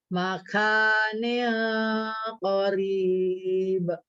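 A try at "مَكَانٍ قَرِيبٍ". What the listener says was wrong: Lagi coba kafnya dikurangin sedikit hamsnya. Kuatin syiddahnya. Makanil qarib.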